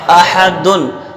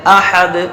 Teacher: تو احدن ہے تو جب ہم ٹھہریں گے تو دونوں پیش گرا دیں گے